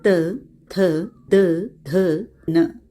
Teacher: त वर्ग उच्चारण स्थान दांत है